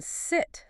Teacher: This is a very relaxed, short sound. Your jaw is only slightly open, tongue loose. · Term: I sound